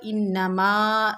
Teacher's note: انما میں نون مشدد ہے، اس کو ہم تھوڑا سختی جماؤ سے پڑھیں گے، اور الف خالی، اس سے پہلے زبر انما، یعنی الف مدہ۔